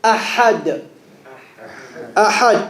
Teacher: Where does this ha come from? Bottom of the throat or middle? Middle of the throat.